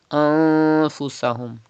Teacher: There is fa, ikhfa letter after noon sakin. So ikhfa will be done, gunna will be done in noon sakin.